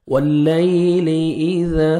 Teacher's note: واللیل اذا، الف مد ہے 1 سیکنڈ زال کو کھینچنا ہے اور زال کو نرمی سے ادا کریں گے، زال ہے زور سے نہیں پڑھنا